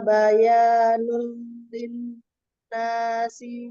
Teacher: nul lil itu ada idgham bila guna, dibaca dilebur ke huruf lam tanpa guna. Linna itu ada nun musyaddadah, tingkatannya yaitu akmal matakun yang paling sempurna.